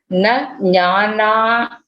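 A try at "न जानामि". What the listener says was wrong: Jana. Not Nya. It is Janamiti.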